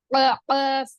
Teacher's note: जबान की जड़ ऊपर तालू को लगने से अदा होती है